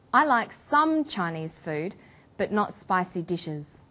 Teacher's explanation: about a restricted or limited amount of something we put the stress on the word some for example I like some Chinese food but not spicy dishes